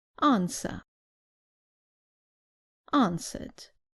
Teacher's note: in British English the r at the end is not pronounced so the last sound is an a